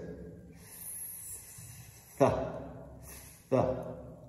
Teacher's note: Today we're going to look at the voiceless TH, the th sound, the sound that doesn't produce any vibrations in the vocal cords. It's a stronger sound and it's produced using generally the tip of the tongue and the top teeth with air passing over the top of the tongue and beneath the top teeth.